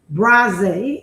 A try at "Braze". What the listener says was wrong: E is silent, so Brass. I like the way you say it though. Like, you got a little accent at the end of it.